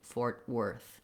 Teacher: The OR letters in worth say the ER sound. So worth is just like the word were plus a voiceless TH sound. We were in Fort Worth might be a way to help you.